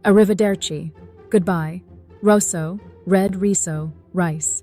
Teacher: Italians roll their R's, and it's something that really gives the language its characteristic flow.